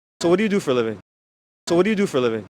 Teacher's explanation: He's reducing all of these vowels to schwa.